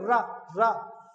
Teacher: तो आप देखो रा का उच्चारण होगा मूर्धा से। बोल के देखो रा, रा।